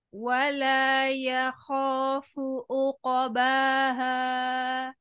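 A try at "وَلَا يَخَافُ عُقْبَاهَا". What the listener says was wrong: Fu-nya tidak monyong, harusnya dimonyongkan. Khafu-nya. Uqabaha. Disambung dari depan.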